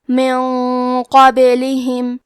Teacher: کلمت من کے آخری میں نون ساکن ہے، پھر حرف القاف آتا ہے کلمت قابلہم، قاف حروف الاخفاء میں سے ہے تو ہم یہ حکم کو غنہ کے ساتھ ادا کریں گے۔ کیونکہ قاف حروف التفخیم میں سے ہے تو ہم یہ غنہ کو بھاری آواز میں ادا کریں گے۔ من قابلہم، کلمت قابلہم میں حرف القاف کو موٹی آواز میں پڑھنا ہے، با پہ جزم ہے تو یہاں با کا حکم ہے قلقلہ تو ہم یہ حرف کو ہلاتے ہوئے یہ کلمہ کو پڑھیں گے۔